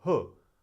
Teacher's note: Hu is 好, so it sounds more like fourth tone